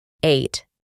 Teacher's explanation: pronunciamos la a como ei